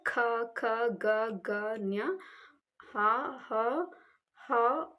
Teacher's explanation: ಕಂಠದ ಭಾಗದಿಂದ ಅಥವಾ ಕಂಠದಿಂದ ಹುಟ್ಟುವ ಒಂದು ಅಕ್ಷರಗಳಿಗೆ ನಾವು ಕಂಠ್ಯಕ್ಷರಗಳು ಅಂತ ಕರೀತೀವಿ